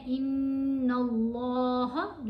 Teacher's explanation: لام کو موٹا پڑھا گیا, نون کے اوپر غنہ کیا, پھر ہا کو آپ نے 3 الف جتنا لمبا پڑھنا ہے. · نون کے اوپر غنہ کرتے ہوئے نون کو لام سے ملائیں گے. لام کے اوپر تشدید بھی ہے, کھڑا زبر بھی ہے, تو لام کو موٹا پڑھیں گے اور لام کو لمبا پڑھیں گے. اللہ کی لام موٹی تب پڑھی جاتی ہے جب اس لام سے پہلے والے حرف کے اوپر زبر آ جائے یا پیش آ جائے.